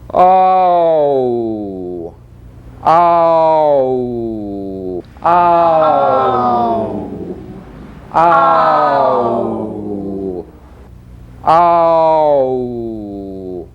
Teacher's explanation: make a large lip opening and sound the vowel a. Gradually reduce the opening until you come to the vowel oo.